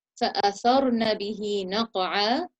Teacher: Therefore, we're going to elevate the ra sound. And the qaf sukun in naqa'a needs to be recited with qalqala.